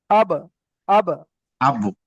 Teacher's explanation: এই যে দুটো ঠোঁটের ভিজে অংশ থেকে বাটা উচ্চারিত হয় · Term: কলকলা